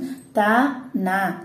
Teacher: த ந அப்படிங்கிறப்ப நம்மளோட நாக்கோட நுனி போய் எங்க போய் டச் பண்ணும்? மேல்வாய் பல்லோட அடியை வந்து டச் பண்ணும்.